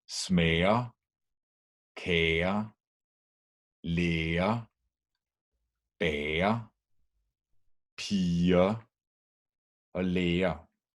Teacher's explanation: Whenever we have a vowel plus GER, then only the G disappears.